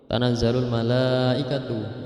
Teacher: Tanazzalul malaikatu itu mad wajib muttasil, harus dibaca 5 atau 6 harokat.